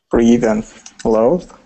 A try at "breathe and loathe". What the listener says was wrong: The vibrating TH sound. Okay, because you said breath. So there's a difference between breathe and breath.